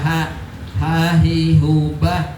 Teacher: yang masih keluarnya dari pangkal tenggorokan yaitu huruf apa? Ha. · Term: huruf ha